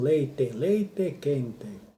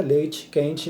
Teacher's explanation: eles pronunciam o E como se fosse o I. Mudou o fonema, a maneira de pronunciar a vogal.